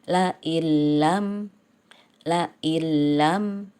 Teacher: idghom Bila Ghunnah jadi melebur tapi tidak mendengung